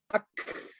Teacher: Kemudian huruf kaf, ak, keluar udara. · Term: Hamas